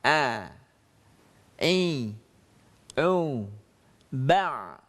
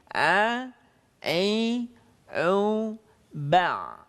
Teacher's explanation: Huruf ain keluar dari tengah-tengah tenggorokan.